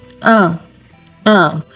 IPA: œ̃